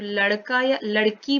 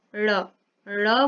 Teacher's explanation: हमारी मूर्धा पे स्पर्श करते हुए हमारी जिह्वा नीचे को आ रही है, तो इसको द्विगुण या उत्क्षिप्त व्यंजन बोला जाता है।